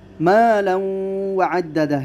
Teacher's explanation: یہاں پر ادغام بالغنہ ہوگا، غنہ کے ساتھ ادغام ہوگا۔